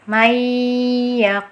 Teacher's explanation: ditahan dulu dengungannya ini masuk ke rongga hidung ya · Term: Idgham Bighunnah